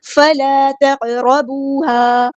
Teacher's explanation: الف مدہ ٹو counts لمبا کریں گے